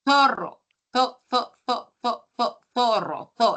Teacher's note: La lengua entre los dientes, el sonido de la Z en zorro, en zumo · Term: interdental